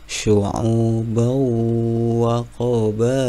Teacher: Waja'alnakum syu'ubau, ada fathah tanwin bertemu dengan wawu, kembali idgham bigunah lagi, masuk ke huruf wawunya dengan berdengung